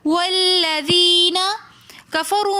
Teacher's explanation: والذین کفروا میں بھی واو مدہ ہونے کی وجہ سے ہم نے اس کو ایک الف کی مقدار کھینچ کر پڑھا